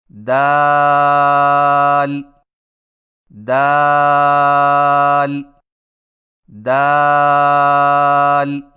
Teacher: دال کی ادائیگی میں زبان کی نوک کو ثنایا علیہ کی جڑ سے لگا کر باریک آواز میں پڑھیں